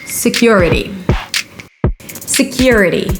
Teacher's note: Primary stress is on the second syllable. Security. Now, you actually have two ways to say this word.